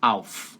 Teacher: Cuidado para não colocar uma vogal depois de F e fazer auf, auf.